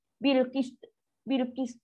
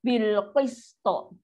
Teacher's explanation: To ni tak bunyi. Kalau dia bunyi pun dia bunyi macam rendah. Dia bunyi macam huruf ta.